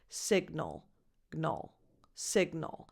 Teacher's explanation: The stress is on the first syllable, so at the beginning of the word, and the vowel is a lax I, signal. And then the G and the N don't blend. They are separated.